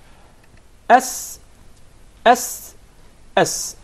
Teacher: So once again, before we go to the next letter, remember, the letter Sin comes from the tip of the tongue and the palates of the two front top incisors